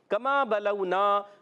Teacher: कमा बलौना, अब यहाँ पर काफ का मखरज बताता हूँ, ज़बान की जड़ और तालु का सख्त हिस्सा आपने याद रखना है। काफ ज़बान की जड़ और तालु का सख्त हिस्सा